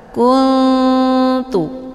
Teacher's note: Ini dinamakan dengan ikhfa aqrab. Cara bacanya, nunnya disamarkan, kemudian siap-siap menuju huruf ta. Kuntu. Hukum bacaan ikhfa aqrab, dibacanya juga sambil didengungkan.